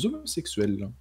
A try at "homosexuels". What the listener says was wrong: Homosexuels, il n'y a pas de liaison.